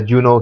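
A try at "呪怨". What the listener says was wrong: And it's Ju-on. Ju-on. sounds like you're saying Juno, like the pregnant girl Juno. It's not an Ellen Page movie.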